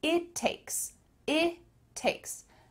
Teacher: there's just one T and these words are linked together